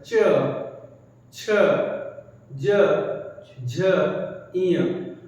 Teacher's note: जब च बोलते हैं तो देखिए हम लोग तालु पर टच करते हैं